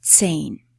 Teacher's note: h in the middle of the word, if it follows a vowel, never has a sound on its own it just makes that vowel, preceding vowel, sound longer.